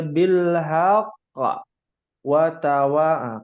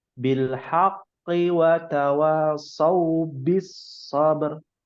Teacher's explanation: Kalau disambung tidak ada qalqalah.